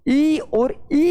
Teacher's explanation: जब हम ई और ई ध्वनि का उच्चारण करते हैं तो उच्चारण करने पर जीवा के बीच का स्थान है, कौन सा स्थान है, जीवा के बीच का स्थान ऊपर की ओर उठता है और ऊपर की ओर उठकर तालु पर दबाव पड़ता है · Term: तालव्य